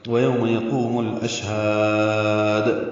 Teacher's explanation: شین ساکن پہ ہمس اور تفشی ہے، ہا کو لمبا کریں گے اور دال ساکن پہ قلقلہ کریں گے